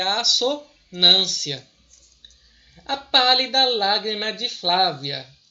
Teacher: repetir aqui o fonema do a acentuado isso aqui é uma assonância